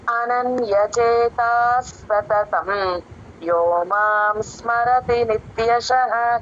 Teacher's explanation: ఈ శ్లోకంలో ఉన్న సున్నాలన్నీ కూడా పెదాలు కలిపి కంప్లీట్ గా ఎం అని పలకాలండి